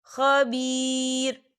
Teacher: یہاں پر آیت ختم ہو رہی ہے، تو ہم یہاں وقف کریں گے۔ وقف کی صورت میں را ساکن ہو جائے گا